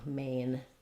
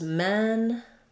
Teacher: the a and e are about the same amount of openness it's just that er is relaxed and it doesn't close um · i'm gliding between two positions i'm closing and relaxing as i go · And just make sure that you don't end up doing men, but may, Maine. Open up for your A and then you glide into the I of the diphthong, Maine. Versus men, that vowel doesn't change. It's open, but it's lax.